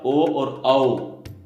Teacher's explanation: इसी प्रकार ओ और औ, ये हुए हमारे कंठोष्ठ्य। कंठ और होठ इन दोनों की मदद से इनका उच्चारण होता है।